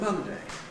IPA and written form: ˈmʌndeɪ (Monday)